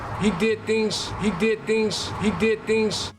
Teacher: With the voicing, we use the voiceless equivalent, which is an S. So the Z sounds at the end of words turn into more of an S sound. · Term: devoicing